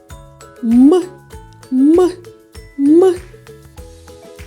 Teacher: коли ми промовляємо звук м губи зімкнуті та без напруги повітря виходить через ніс звук м співати не можна бо губи утворюють перешкоду повітря тож